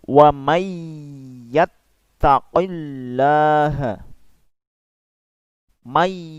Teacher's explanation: Cara membacanya itu harus dilebur. Tidak dibaca man, akan tetapi dilebur langsung dengan ya. Makanya di sana ditandai dengan tasdid. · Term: idgham bi gunnah